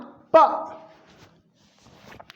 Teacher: इसके बाद प, इसको उच्चारण करके देखिए जरा, इसकी ध्वनि कहां से निकल रही है? प, मतलब जब इसको उच्चारित करते हैं पा को, तो दोनों होठ आपस में मिल जाते हैं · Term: ओष्ठ